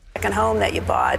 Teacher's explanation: She does a little bit of the vocal fry at the end.